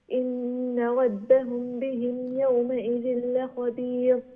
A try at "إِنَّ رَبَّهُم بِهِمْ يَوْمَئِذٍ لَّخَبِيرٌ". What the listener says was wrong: إن ربهم ميم ساكن إخفاء. Yes, so do the إخفاء a bit more. إن ربهم بهم يومئذ, like that.